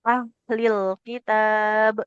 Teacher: huruf ha sukun ini dia punya sifat mengalir suara dan nafas.